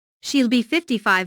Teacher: Notice that 55 is stressed here.